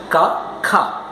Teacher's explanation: ശ്വാസം പുറത്തേക്ക് പോകും ഹ എന്നുള്ളത് പുറത്തേക്ക് പോകും